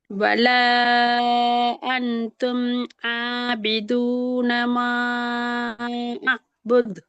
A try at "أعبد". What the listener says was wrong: பிழை. புத் என்ன பிழை? தால் கலக்கல்ல. புத் என்னாலும் பிழை. ஐனா கலக்கப்படாது. தால தான் கலக்கணும். அழுபூது அப்போ ஐனையும் கலக்கி தாலையும் கலக்கிறோம். அது பிள்ளை ஐன் கலக்கப்படாது.